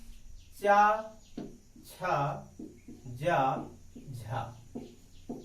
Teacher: बोलते समय स्पर्श भी करते हैं और इनको निकलने में समय भी लगता है, संघर्ष भी करना पड़ता है। तो जिन वर्णों को बोलते समय कुछ संघर्ष भी करना पड़े और वो अपने उच्चारण स्थानों को टच करके निकले, स्पर्श करके निकले, ऐसे वर्णों को संघर्षी, स्पर्श संघर्षी वर्ण कहा जाता है।